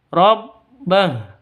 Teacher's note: Karena berhenti maka hu ini menjadi sukun. H-nya menjadi sukun bukan hu lagi tapi su sukun mati.